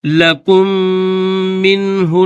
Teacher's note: پہلا جو میم ہے اس کے اوپر جزم ہے، اور دوسرا جو میم ہے اس کے اوپر تشدید ہے. تو جزم والا میم جو ہے اس کو چھوڑ کر تشدید والے میم کو پڑھیں گے